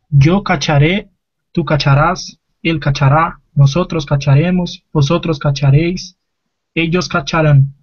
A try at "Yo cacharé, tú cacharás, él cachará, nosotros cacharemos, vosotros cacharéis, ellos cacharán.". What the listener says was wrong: Muy bien.